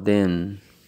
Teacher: la th se pronuncia colocando la punta de la lengua detrás de los dientes superiores para que frene como el aire a la salida